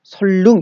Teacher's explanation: 니은과 리을. 니은이 리을 앞에 오며 니은이 리을로 바뀌어